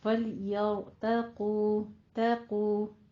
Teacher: تا باریک، توقو نہیں کہنا ہے، تا باریک، قوف کو پر پڑھنا ہے